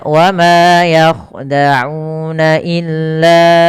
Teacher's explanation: dalam riwayat Imam syatibi itu atau j-jari jalurnya Imam syatibi itu tidak boleh dibaca Dua tapi dibaca dengan empat atau lima harakat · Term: Mad Jaiz